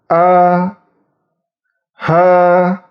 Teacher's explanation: dan huruf H ingat huruf apabila terdapat tanda baca fathah dibaca keluarnya itu di pangkal tenggorokan ingat pangkal tenggorokan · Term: huruf hamzah